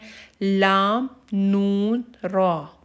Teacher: हरूफ तरफिया को हरूफ तरफिया इसलिए कहा जाता है क्योंकि ये तरफ लिसान से अदा हो रहे हैं।